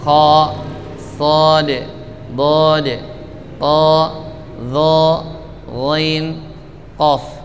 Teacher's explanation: huruf yang ketika difathahkan bunyinya seperti bunyi o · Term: huruf isti'la